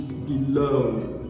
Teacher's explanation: syllable word so for instance if i have the word below the stress is often placed on the second syllable